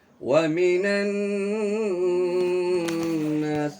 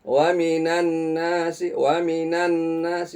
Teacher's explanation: Nun bertasydid ini dibacanya gunnah dengan takaran gunnahnya kurang lebih 2 ketukan.